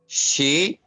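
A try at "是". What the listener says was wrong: जी शी, फिर fourth tone है शी जी।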